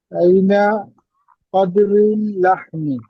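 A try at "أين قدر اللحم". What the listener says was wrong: কদরি কেন, আমরা কিদ্রুন পড়ছি না, একটু আগে পড়ে আইছি না, হাজা কিদ্রুন, হাজি কিদ্রুন, হাজি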